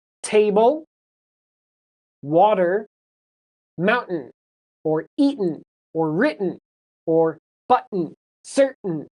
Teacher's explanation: there's that stop sound and then it follows with an n on a lot of these examples